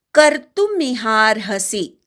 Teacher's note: कर्तु मधल्या क वर आघात. मिहार्हसि हा पूर्ण म्हणून मग रफाराचा उच्चार करायचा.